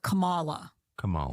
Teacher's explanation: I remember her putting the emphasis on the second syllable. So it was like Kamala.